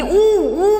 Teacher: तुमच्या लक्षात येईल की ऊ ऊ म्हणताना जीभ काहीशी मागे ओढली गेलेली आहे आणि उचलली गेलेली आहे. म्हणजे इथे आपण बघितले पश्चस्वर, ऊ पश्चस्वर म्हणजे जिभेचा मागचा भाग वर उचलला जातो. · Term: संवृत्त स्वर